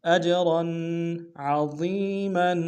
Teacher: را کو بتنوین غنہ کریں گے · حمزہ کو جیم کے سامنے آنا جیم حروف قلقلہ سے قلقلہ کریں گے